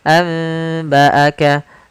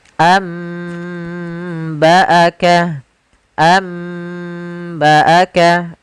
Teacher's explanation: bacaan idbaq yaitu dengan membaca dengan bibir tertutup rapat